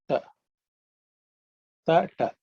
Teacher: It plus A gives us Ta, which is the cerebral consonant. Ta varga is the first one, unaspirated one.